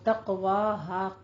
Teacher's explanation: قاف کو آپ نے قلقلہ کرنا ہے، حروف مستعلیہ میں سے بھی ہے اور حروف قلقلہ میں سے بھی ہے، اس کو پر پڑھتے ہوئے قلقلہ کرنا ہے